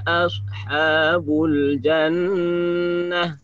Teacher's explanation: Seandainya kita wakaf di sini bukan lagi ashabul jannat, tapi jannah. Paham ya? Jannah karena tak marbutah.